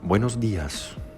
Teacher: The pitch raises on the DI of días and then falls back down. · greetings in Spanish first raise sharply in pitch and then fall back down at the end.